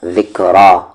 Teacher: را کی آواز اوپر جا رہی ہے تو یہ را ہیوی پڑھی جائے گی